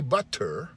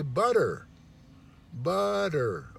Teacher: we put a D we say a D instead of a T